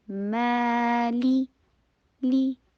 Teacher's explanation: پھر لی کی ساؤنڈ آئے، لے کی ساؤنڈ نہیں آئے، مالی کی، یا سافٹلی ہمیشہ ادا کرتے ہیں، اور فتحہ کے لیے جبڑے کو کھولیے اور واو کے ساتھ ملا رہیے.